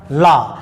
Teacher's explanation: जब हम इसका नाम लेते हैं तो वास्तव में जीभ मुख के बीचों बीच खड़ी हो जाती है और जो अंदर से आवाज़ निकलती है वो जीभ के दोनों किनारे से होती हुई आवाज़ निकलती है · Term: पार्श्विक